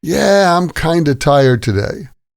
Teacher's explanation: We usually say kind of like kinda.